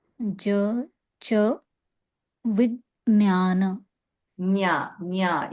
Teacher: you have to go to talu to say the nya